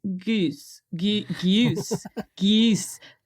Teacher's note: it's happening all around the world Goose fronting apparently especially in southern British English